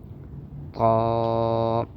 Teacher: زبان کی نوک اوپر لگائیں گے اور زبان کا بیچ اوپر والے تالو سے لگے گا، جس سے یہ حرف موٹا ہوگا، اور اس کو پڑھتے ہوئے منہ کھولیں گے تاکہ منہ کے اندر ہوا بھر جائے، آواز بھر جائے، تاکہ یہ حروف موٹا ہو کے ادا ہو۔